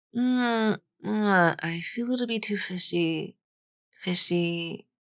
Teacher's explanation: And kind of her fishy has a little downward step to it, but the E on fishy, it doesn't have a glide in that final syllable. The intonation is kind of flat.